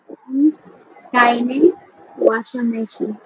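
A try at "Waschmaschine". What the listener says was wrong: ভাষা, ওয়াজ মেশিন, ওয়াজ মেশিন, ওয়াসার না,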